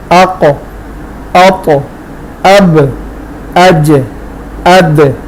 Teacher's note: تو دیکھیں ان کی آواز مخرج سے ریباؤنس ہو رہی ہے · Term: قلقلہ